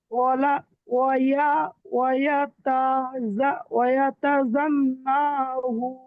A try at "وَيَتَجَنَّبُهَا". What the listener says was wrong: নুন টান হয়ে যাচ্ছে ভাই। নুন টান হয়ে যাচ্ছে ভাই আপনার। ওয়ায়াতাজান্নাবুহাল।